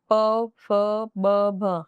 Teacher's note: प फ ब भ, हाँ, ओष्ठ यानी होठों से बोले जा रहे हैं